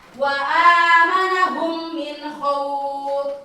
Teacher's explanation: huruf mim mati atau mim sukun bertemu dengan huruf mim, maka dibacanya gunah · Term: idgham mutamasilain